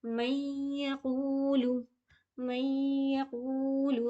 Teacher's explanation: یہاں پہ من نہیں پڑھیں گے بلکہ میں پڑھیں گے، یا میں ملائیں گے کیونکہ یا میں بھی تشدید آئی ہے · قو کو کھینچیں گے کیونکہ یہاں پہ واو مد ہے